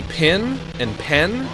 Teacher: If you say pin and pen, it just sounds like the same word twice.